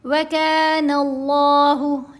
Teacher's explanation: لفظ اللہ کی لام کو موٹا پڑھنا ہے